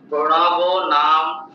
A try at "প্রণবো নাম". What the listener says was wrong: প্রণব নাম নয়, প্রণব নাম, ময়ের পরে অয়ের উচ্চারণটা করতে হবে তো।